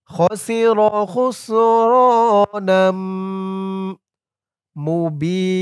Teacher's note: নাম নুন দিয়ে মিম ধরবে ইদগামে বাগুন্না